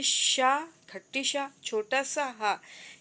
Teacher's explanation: इनको बोलते समय जो है जीभ जो है रगड़ती है और गर्म वायु निकलती है। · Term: ऊष्म व्यंजन